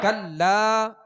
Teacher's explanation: یہاں لام کے ساتھ الف ہے تو ایک الف کی مقدار کھینچ کر پڑھیں گے. الف مدہ ہے، الف سے پہلے زبر آ گیا لام کے اوپر، تو حروف مدہ کی جو ہم نے کل سبق کی مشق کی تھی یہ اسی میں سے. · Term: حرف مد